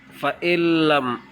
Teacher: لیکن نون پر غنہ نہیں ہے کیونکہ لام آ گیا